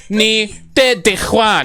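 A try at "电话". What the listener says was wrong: It's not the Juan. It's D-I-A-N. You have A-N. Dian. Dian Hua.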